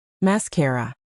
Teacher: Mascara has three syllables. The stress is on the middle syllable again. Mascara. Notice that the last a is just an a sound.